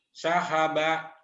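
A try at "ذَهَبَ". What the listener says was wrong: Hes. Bukan sa. Za. Tertukar. Zahaba. Bukan zabaha. Ketukar. Zabaha. Zahaba. Ketukar. Ketukar. Zahaba.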